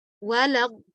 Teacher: Sehingga di kata wala, peniadaan, itu kita angkat suara kita.